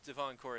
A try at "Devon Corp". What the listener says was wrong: Because it sounds like you're saying Devon Court. That's Devon Corp.